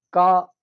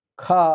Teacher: का कहने से अल्प वायु है, खा कहने से अधिक वायु है, तो खा का जो है महाप्राण हो जाएगा।